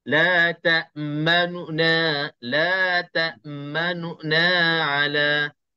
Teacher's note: Jelas nu itu perlahan. Dia sebutannya perlahan daripada na. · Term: bacaan raum